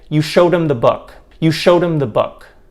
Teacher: do you hear how i'm not really pronouncing the h in that because him in this sentence is not stressed or emphasized · the ed verb ending in showed is actually more of a flap than a true light release D sound. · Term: flap tap sound